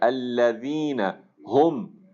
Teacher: ہا ادا ہونا چاہیے آپ کے اقصا حلق سے